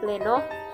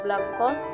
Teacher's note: Gugus konsonan keduanya adalah konsonan lateral, L misalnya PL pleno, BL blanco, dan begitu seterusnya hingga konsonan kedua R dan W.